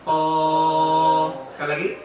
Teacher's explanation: To juga sama tempatnya, tapi bedanya pangkal lidahnya naik, maka membuat dia hurufnya tebal. To, ya, bukan to.